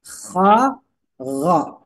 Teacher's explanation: huruf k ini keluar dari tengorokan